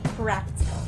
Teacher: practical is stressed on the first syllable so say practical not practical full sound for the second practical